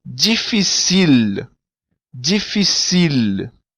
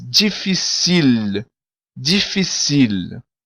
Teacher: O L em crioulo, ele não tem som de U, como em português, mas sim de L mesmo.